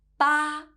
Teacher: the number 八 has the first flat tone